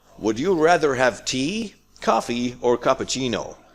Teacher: tea up coffee up or cappuccino down